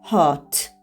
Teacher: Pth. Amerika variantında hot. O ilə a-nın qarışığı kimi hot.